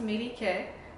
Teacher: In fact, if I put an accent over here, you recognize that the accent is on the third syllable